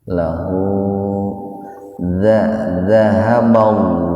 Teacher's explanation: Lafaz Allah didahului oleh fathah, jadi dibacanya tebal. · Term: tabhim